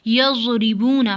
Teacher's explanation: ज़ौत की आवाज़ बहुत मोटी और नरम होती है और जमाव से निकलती है, जैसे यज़रिबूना, बहुत मोटी होती है, ज़ौत से भी मोटी होती है।